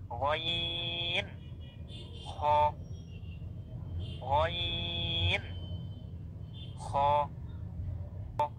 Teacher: গলার উপরের অংশ থেকে হরফগুলো উচ্চারণ করতে হবে।